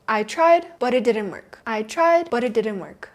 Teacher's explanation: you do not hear me pronouncing the T at the end of but.